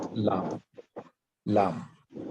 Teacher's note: পড়বেন মাখরাজের তারপর নিজে পড়ার চেষ্টা করবেন জি আট নম্বর মাখরাজ জিহবার আগা ডান বা বাম কিনারা উপরের পার্টির সামনের দাঁতের গোড়ার সাথে লাগিয়ে উচ্চারণ করতে হবে